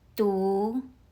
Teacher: 独 uses the second tone. Your voice rises like you're asking a question.